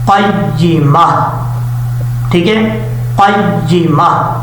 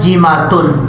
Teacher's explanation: اور وقف کرتے ہوئے آپ نے اس تا کو تا نہیں پڑھنا، جب وقف کریں گے تو تا کو ہا سے چینج کر دیں گے اور ہا کو ساکن کر دیں گے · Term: گول تا